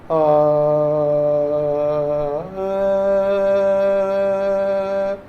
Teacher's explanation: ഇത് വളരെ മുൻപോട്ടേക്ക് വന്നിട്ടുള്ള അകാരമാണ്